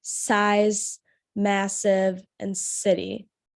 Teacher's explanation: you can see especially in the s sounds there's air coming through the gaps in your teeth